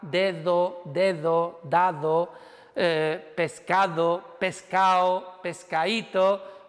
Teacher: la D que hemos hablado, que se convierte en fricativa